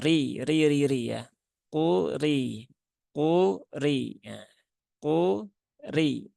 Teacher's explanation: ro yang berbaris kasrah dia rnya tipis ya rnya tipis maka cukup dibaca dengan RI biasa ri tidak perlu sampai r r Riah kalau RI dia pangkalnya